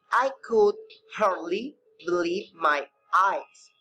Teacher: the word hardly, believe, and eyes are stressed because they are important in meaning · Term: sentence stress